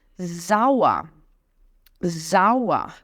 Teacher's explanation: dizer zaa zaa então s é tem som de z e o er no final tem som de um azinho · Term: som do er